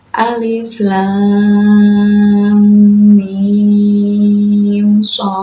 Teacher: Oh ya, tadi mim ke shad itu kan mim sukun bertemu shad ya. Mim sukun bertemu shad itu dibaca idhar syafawi. Jadi di situ tidak diidghamkan tetapi dibaca jelas ya.